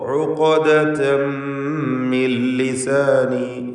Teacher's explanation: ഉഖ്ദതൻ ഐനും തൊണ്ടയിൽ നിന്നാണ്. ഖാഫ് സാക്കിനത്താണ്. ഖൽഖല സുഗ്റ നൽകി അതോടൊപ്പം തഫ്ഖീമും നൽകണം. ഇസ്തിഅലാന്റെ ഹർഫ് ആയതുകൊണ്ട് ഉഖ്ദതൻ മിൻ ലിസാനി.